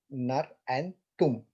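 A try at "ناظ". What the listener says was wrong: so that's a za. So it's naz.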